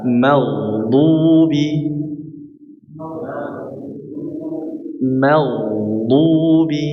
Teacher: Maka berikan huruf ghain aliran tanpa suara ngorok ya.